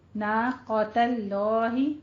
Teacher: جلالہ سے پہلے زبر آ رہی ہے، اس کو ہم پر پڑھیں گے، درمیان والے لام کو صرف پر پڑھیں گے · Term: لفظ جلالہ